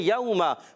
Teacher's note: वाव साकिन से पहले ज़बर, वावलीन है, नरमी से अदा करेंगे, मीम पर ज़बर है, हरकतें नहीं खींचेंगे।